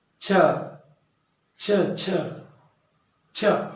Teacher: ಅಂದರೆ ಹೆಚ್ಚು ಕಡಿಮೆ ಇವು ನಮ್ಮ ಇಲ್ಲಿ ಹಲ್ಲಿನ ಮೇಲಿನ ಭಾಗದಲ್ಲಿ ಛ ಅಂತೇಳಿ ನಾವು ಉಚ್ಚರಿಸ್ತೀವಿ. ಹಾಗಾಗಿ ಇವುಗಳನ್ನು ನಾವು ತಾಲವ್ಯಾಕ್ಷರಗಳು ಅಥವಾ ದವಡೆಯ ಅಕ್ಷರಗಳು ಅಂತ ಹೇಳಿ ಕರಿತೀವಿ.